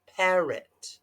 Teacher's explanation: it's got the schwa the O makes a uh